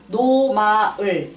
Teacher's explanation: 코천장을 울리면서 나오는 소리고 코로 흘러나오는 소리, 콧소리, 비음이고요.